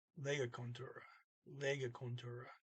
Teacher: then you have this e t at the end so contour the t is not pronounced it just sounds like a trailing e